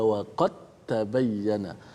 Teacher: Dia terus masuk, dia panggil idgham mutajanisain. Dal itu dimasukkan ke dalam huruf ta secara total, hanya tinggal pada tulisan saja. Adapun pada bacaan huruf dal itu dimasukkan ke dalam huruf seterusnya, huruf ta tadi.